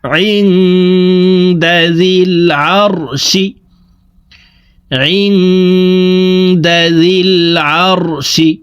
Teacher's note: নুন সাকিনের পরে ইকফার 15টি হরফের ভিতরে একটি হরফ দাল আসছে, এই কারণে এই নুন সাকিনকে নাকের ভিতরে লুকাইয়া গুন্নার সহিত পড়ব। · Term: ইকফাহ গুন্না